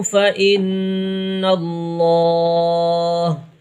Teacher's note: جب بھی اللہ کے لام سے پہلے حرف کے اوپر زبر آئے گا تو اس اللہ کے لام کو پور پڑھیں گے، یعنی موٹی آواز میں پڑھیں گے، اور اگر یہاں پر زیر ہوتا پھر یہ اللہ کا لام باریک ہو جاتا۔